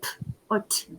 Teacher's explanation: you're not using your voice to produce the sounds, just your articulators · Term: voiceless